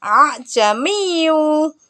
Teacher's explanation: berurutan Hamzah yang pertama dibaca tahqik seperti Hamzah pada umumnya sedangkan Hamzah yang kedua dibaca tashil cara membacanya dengan membunyikan Hamzah seperti Huruf ha yang samar yaitu antara bunyi Hamzah dengan bunyi Alif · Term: taskhil